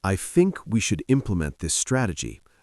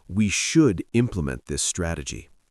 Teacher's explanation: For example, compare the sentences, I think we should implement this strategy versus, we should implement this strategy. In the second version, the emphasis on should conveys confidence and decisiveness.